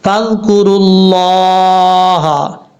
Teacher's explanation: زبر یا پیش ہو تو لفظ اللہ پر پڑھا جاتا ہے، یہاں لفظ اللہ سے پہلے را کے اوپر پیش ہے، اس لیے لفظ اللہ کو پر پڑھیں گے